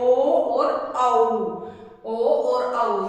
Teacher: ओ और जो औ है हमारा, ये हमारा कंठोष्ठ स्वर आता है